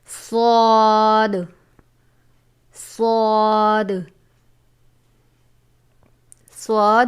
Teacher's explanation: زبان کی نوک اور دونوں دانتوں کے اندرونی کنارے سے ادا ہوتا ہے